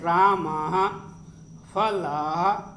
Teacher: इसमें ह जैसी हल्की ध्वनि आती है। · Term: विसर्ग